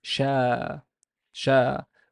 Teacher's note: Sheen has no vowel, but there's an alif after it, so it's long vowel sound.